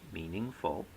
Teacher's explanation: will tell you that the word meaningful meaningful three syllables has a primary stress on the first syllable a secondary stress on the third syllable and no stress on the second syllable